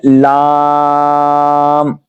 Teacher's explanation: लाम को अदा करेंगे जुबान का किनारा और दवाहिक से सनाया तक के मसूरों से अदा होता है।